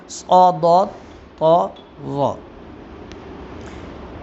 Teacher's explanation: ان حروف کو ادا کرتے ہوئے زبان تالو سے مل جاتی ہے جس کی وجہ سے یہ حروف بہت ہی پر پڑے جاتے ہیں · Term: حروف مطبقہ